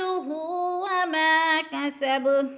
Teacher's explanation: مالہ وما کسب، وما پہ الف مدہ، الف مدہ کو کھینچ کر پڑھنا ہے۔ کسب، با پر قلقلہ ہو رہا ہے، وقف کی صورت میں کسب پڑھیں گے، اور یعنی با پر قلقلہ کریں گے، جزم کر دیں گے، جزم لگا کر پڑھیں گے۔